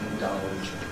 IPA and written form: ɪnˈdʌlʤ (indulge)